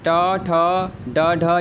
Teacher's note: ट, ठ, ड, ढ ये आपका मूर्धन्य है